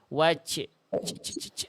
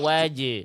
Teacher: jim enggak boleh terpercik nafas kenapa karena jim sifatnya jahr tertahan nafas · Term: jim sukun